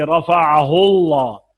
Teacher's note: अगर लफ्ज़ अल्लाह से पहले ज़बरिया पेश हो तो ये लाम मुफ़ख्ख़म यानी पुर पड़ेंगे